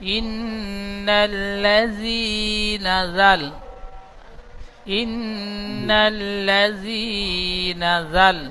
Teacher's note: জিহ্বার আগা সামনে উপরে দুই দাঁতের আগার সাথে হালকা ভাবে ঠেকে জাল উচ্চারণ হবে।